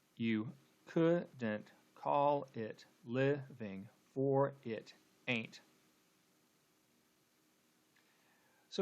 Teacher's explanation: second line starts with an unstressed syllable and ends with a stress syllable